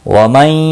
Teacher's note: ومن نون ساکن کے بعد حرف یرملون کا یا ادغام باغنہ ہوگا۔